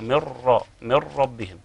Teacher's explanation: فطبعا عندي راء هحول النون لراء تبقى مر، وبعد كده ادخل الراء الساكنه في الراء المتحركه تبقى مر من ربهم. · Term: الادغام الكامل